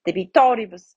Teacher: the I between the R and the B is short, so the accent goes to the antepenultimate.